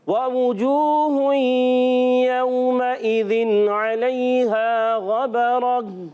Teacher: गैन पर ज़बर है, उर्फ मुस्तालिया से है, इसको मोटा पढ़ेंगे। और रा पर भी ज़बर आने की वजह से रा को पुर पढ़ेंगे।